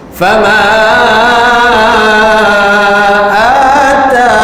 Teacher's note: Yang mana mad arid lis sukun ini kadar harakatnya ada 3. 2 harakat, 4 harakat, 6 harakat. Terpulang kepada pembacanya untuk memberhentikan bacaan dengan cara begitu, sama ada nak dibaca 2 harakat, 4 harakat ataupun 6 harakat.